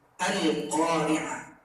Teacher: Perhatikan pada ayat pertama lamnya dibaca jelas, ada tanda sukun. Jadi al ini adalah alif lam qamariyah.